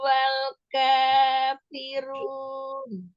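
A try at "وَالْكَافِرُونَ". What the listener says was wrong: Nah, tinggalkannya tuh yang kepanjangan. Kanya kepanjangan. Wal kafirun. Jadi kayaknya 2 harakat ya.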